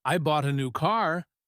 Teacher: the stress is on bought and new